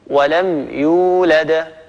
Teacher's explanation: الدال ليس بعدها شيء، لذلك فإن القلقلة في حرف الدال تكون واضحة جلية